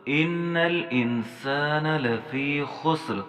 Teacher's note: حمزے کو ہم نے نون کے ساتھ لگانا ہے کیونکہ نون مشدد ہے، اور نون کو ہم نے لام کے ساتھ لگانا ہے۔